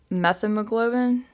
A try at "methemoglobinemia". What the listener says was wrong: Yes, methemoglobin-mia. And add a Mia on it. Methemoglobin-mia.